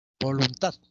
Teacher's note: el acento está en la última sílaba